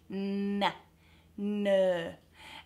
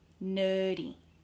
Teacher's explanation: the N requires my tongue to start up here on the ridge behind my top teeth no no and then it drops right down to behind my